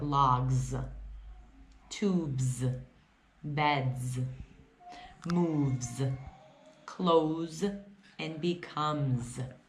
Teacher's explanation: you also hear the Z sound when there's an S after a voiced consonant